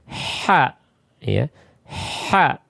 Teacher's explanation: Diperhatikan huruf ha ya, keluar dari tengah tenggorokan.